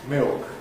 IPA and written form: mɪok (milk)